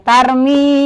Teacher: setiap ada ia mati setelah kasrah dibaca panjang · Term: mad